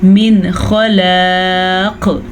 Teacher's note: नून साकिन के बाद हरूफ हल्की में से खा आया हुआ है, तो हम नून साकिन को ज़ाहिर करके बग़ैर गुन्ने के पढ़ेंगे